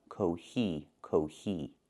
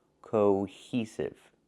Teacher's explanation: The word is pronounced cohesive, not cohesive. We need the long O, co, like no and go. Cohesive. With the H sound, plus the long E sound like see and me.